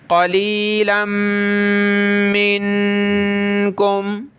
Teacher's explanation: إِلَّا قَلِيلًا مِّنْكُمْ، لام میم دو زبر لم، میم نون زیر من، تو یہ میم کا غنہ بھی ہوگا اور نون ساکن کا بھی، یعنی اس پورے ایریا میں ہم نے ناک میں آواز پیدا کرنی ہے